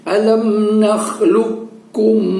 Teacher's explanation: Nah, jadi suara qafnya itu kita bentuk di dalam rongga mulut kita dengan suara menaikkan ujung lidah kita ke atas tetap suara isti'lanya mengangkat ujung lidah ke langit-langit tetap kita fungsikan, tetapi pada saat kita membacanya kedengarannya suara kaf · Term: idgham mutaqaribain